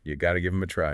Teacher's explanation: It gets shortened a lot in everyday speech >> where you shorten you have got to to say you got to >> you got to notice how the word have just it disappears completely. >> It's understood but it's not spoken.